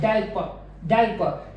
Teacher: डाइपर मेरा primary stress है, डाइपर डाइपर, डाई की जो साउंड है मेरी ऊंची रहेगी, प नीचा रहेगा